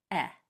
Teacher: For the short E sound, your tongue is just hanging there in the middle. It's not really used. No muscles are used in your tongue at all.